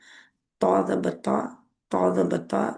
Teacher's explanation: पीछे से ज़बान की जड़ ऊपर उठेगी और ता मोटा होगा। मोटा ही होता है हर वक्त ज़बर ज़ेर पेश के साथ।